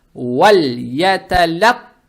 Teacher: Далее стоит буква та, она твердая с фатхой. Фатха приобретает оттенок о. Буква та удваивается. Получается вальяталятта.